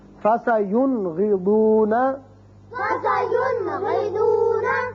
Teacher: اس کے بعد ہے غین فَسَيُنْغِضُونَ، فسينغضون. نون ساکن کو ہم نے ظاہر کر کے پڑھا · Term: اظہار حلقی